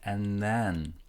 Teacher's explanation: And sounds like an. This D is silent, and when we're connecting an and then, it feels like there is an extra N in here, so and then. · This D is silent, and when we're connecting an and then, it feels like there is an extra N in here, so and then. And this TH is very weak, you barely can hear it.